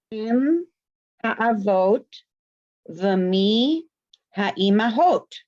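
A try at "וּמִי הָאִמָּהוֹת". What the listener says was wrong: Good, other than the vav becomes the soft. Puruk, it becomes umi.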